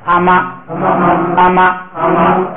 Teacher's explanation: 后一个音节不允许升，所以变成平调